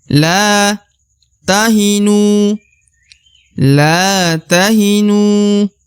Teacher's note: huruf la dibaca Dua harakat karena terdapat alif di depan huruf la atau biasa disebut huruf lam alif ya maka harus panjang dua